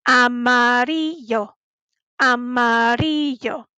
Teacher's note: if we have two L's, we have to say a Y sound